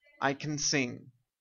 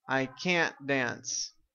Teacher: the affirmation very very very short no sound of the vowel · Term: no vowel sound